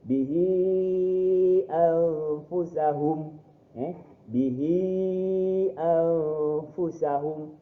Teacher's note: Jadi ni huruf ni ha bertemu dengan huruf hamzah dalam kalimah yang berlainan dan dibaca 4 ataupun 5 harakat.